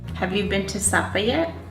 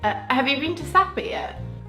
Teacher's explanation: For yes no questions, both accents have a rising intonation, but the difference is that Americans tend to have a steady rise · English people tend to have a quick rise and then a little fall